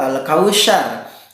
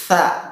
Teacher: Sa itu makhraj huruf sa, ujung lidah kita dikeluarkan kemudian ditempelkan ke ujung gigi.